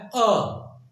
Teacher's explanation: देखिए आप कहते हैं जब, तो ये ना तो एकदम आपके पीछे से आता है ना तो आगे से आता है, बीच से आपका आता है अ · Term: मध्य स्वर